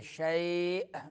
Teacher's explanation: آخر میں حمزہ ہے تو جھٹکا دیں گے